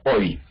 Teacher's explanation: Empezamos con una abertura mayor, O, y terminamos en la I, se cierra.